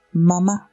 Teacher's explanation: Mem es nasal bilabial sonora y suena como la M en la palabra mamá.